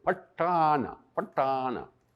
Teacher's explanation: That's the Indian accent, is because they have what they call a retroflex consonant, which means that you put your tongue on the top of your mouth when you're saying it.